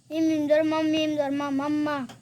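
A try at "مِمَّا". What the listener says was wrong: মিম এনে জবর হইতো না, মিম জের মি দেখো না, মিম জের মি। মাম্মা বিউমনা। মাম্মা বিউমনা, মাম্মা বিউমনা। এনে দুই আলিফ লম্বা হইবে। হ্যাঁ, হারা জবর থাকলে দুই আলিফ লম্বা হইবে।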